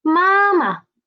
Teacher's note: it means mother and the second ma is a neutral tone